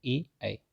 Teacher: ए का जो उच्चारण स्थान होता है वो मिक्स्ड होता है, यानी कि कंठ और तालु दोनों का प्रयोग होता है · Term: कंठतालु